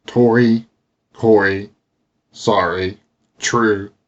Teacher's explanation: This is more of a liquid R rather than a flapped one.